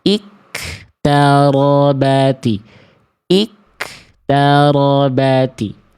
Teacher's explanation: udah mah nggak ada pantulan, dia keluar percikan nafas, berubahlah akhirnya jadi huruf kaf sukun